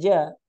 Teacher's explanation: Sifatnya itu syadidah, syiddah tertahan suaranya dan juga jahar. Ya, nafasnya itu tidak mengalir. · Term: jim